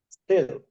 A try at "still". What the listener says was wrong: Still, you said style. Absolutely. This is a style and this is still. So this is style and this is still.